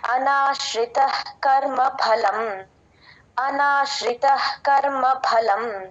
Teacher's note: Clear గా వినిపిస్తుంది. అనాశ్రిత త పక్కన ఉన్న విసర్గని హెచ్ లాగా రాసేసుకోండి. క ముందు ఎప్పుడు విసర్గ వచ్చినా హెచ్ సౌండ్ పలుకుతాం.